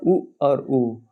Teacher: ओठ को गोलाकार जब भाग में जब मोड़ते हैं तो उ और उ निकलता है इसका उच्चार स्थान ओट हो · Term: ओष